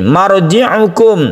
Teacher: Ra sukun ini dibaca tebal karena didahului oleh Fatha.